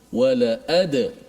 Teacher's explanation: Dal yang mati tu. Wala dal tu dimati, kemudian dilantunkan bunyinya. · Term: qalqalah